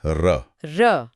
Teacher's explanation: इसके उच्चारण में जीभ में कंपन या वाइब्रेशन होता है। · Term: लुंठित या प्रकंपित व्यंजन